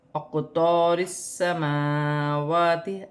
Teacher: را باریک پڑھا جائے گی کیونکہ را کے نیچے زیر کی حرکت ہے ، را کو سین کے ساتھ ملا کر پڑھا جائے گا،